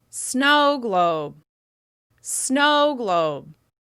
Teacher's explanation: That's right, the first syllable is stressed. As you practice, make sure that first syllable is longer, louder, and higher in pitch with extra clear mouth movement.